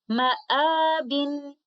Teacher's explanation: If we choose to continue our recitation on this word, we will recite this mad letter with 2 counts of maddul badal